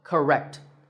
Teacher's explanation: we stress the second syllable, rect, so correct. Notice how that stressed syllable is said with a slightly louder volume, and it also sounds longer